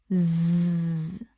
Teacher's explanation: Make a buzzing bee sound. Zzz. You should feel a strong buzzing vibration against your palm. That is the voice.